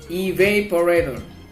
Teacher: We put the primary stress on the second syllable, or the heaviest stress on the second syllable